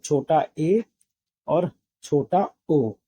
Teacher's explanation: अर्ध संव्रत में क्या होता है? उच्चारण काल में मुख आधा बंद रहता है। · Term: अर्ध संवृत